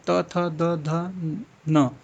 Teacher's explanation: त वर्ग क्या होता है? त थ द ध न दंत से आता है